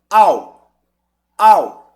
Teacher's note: ele vem do Forte pro fraco ou seja ele decresce é um ditongo decrescente · tanto que que predomina sobre o u ele apaga o u Então o a é o forte o u é o fraco